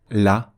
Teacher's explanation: prononcera avec légèreté d'un point de vue pratique ça signifie que le LaM va être prononcé avec la langue plate qui est la position naturelle pour prononcer un Lam